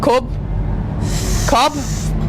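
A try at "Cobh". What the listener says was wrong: BH is actually pronounced with a V sound.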